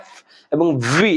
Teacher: এফ উপরের দাঁত নিচের ঠোঁট, উপরের দাঁত নিচের ঠোঁট একত্রে মিলিয়ে পড়তে হবে